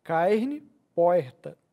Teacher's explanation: o chamado r retroflexo aquele r dobrado